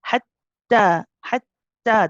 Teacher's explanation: you'll hear the shidda, so the sound will stop. This is why we say hatta, hatta, the sound stops.